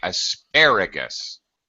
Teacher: the stressed syllable is the second syllable the last syllable is is is unstressed so it's very short